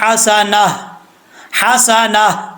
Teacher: وقف کرتے وہ ہا کا ساؤنڈ آئے گا آخر پہ۔ اگر یہاں پہ آپ وقف نہیں کرتے، وقف ملا کے پڑھتے ہیں، وصل کرتے ہیں، تو اس وقت یہ تا پڑھی جائے گی، اور پھر یہاں پہ ادغام یرملون ہوگا۔